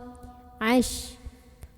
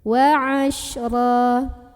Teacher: Huruf shinnya ini punya sifat yang khusus yang tidak dimiliki huruf lain yang tadi, yaitu sifat tafashi, artinya ada sebaran angin di dalam mulut.